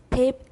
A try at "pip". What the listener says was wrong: Okay, don't say peep. Peep is P-E-E-P. Peep is the sound little chicks make. This is pip. Pip, right?